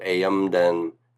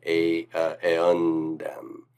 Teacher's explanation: in anticipation of the D, the M changes to an N sound. So notice that when you do n, the tongue is in the same place where the da is, right? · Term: partial assimilation